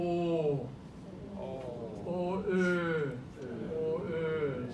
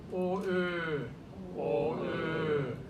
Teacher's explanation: [Music] So for the mouth gets a little bit rounder. The lips go out a little bit. The mouth is rounder.